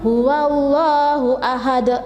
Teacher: Jadi huruf qalqalahnya yaitu dal yang berharokat dhammatain, tetapi membacanya itu harus disukun dan memantul lebih keras